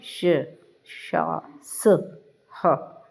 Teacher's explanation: उष्म व्यंजन जो होते हैं इनका उच्चारण एक प्रकार की रगड़ या घर्षण अर्थात गर्म वायु से होता है और इनका उच्चारण करते समय अपेक्षाकृत सांस की प्रबलता रहती है।